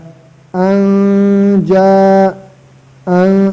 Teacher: نون ساکن ہے، نون ساکن کے بعد جیم آیا، ادھر اخفا ہوگا. اگر تنوین یا نون ساکن کے بعد یہ حروف آ جائے تا ثا جیم دال ذال زا سین شین صاد واد طا ظا فا قاف کاف تو غنہ کے ساتھ اخفا ہوگا.